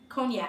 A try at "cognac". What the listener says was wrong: I feel like the G is silent.